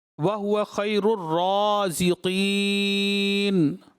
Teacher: را پر جو ہے کھڑی حرکت تھی، ایک الف کھینچنا تھا، زیادہ دراز کر دیا۔